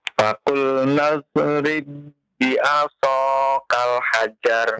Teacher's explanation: Huruf ba-nya tidak ada qalqalah ya. Karena huruf ba yang pertama masuk kepada ba yang kedua dan dia bertasydid ya.